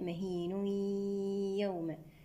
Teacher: راح يكون عندنا إدغام بغنة ناقصة لأن التنوين التقى مع حرف الياء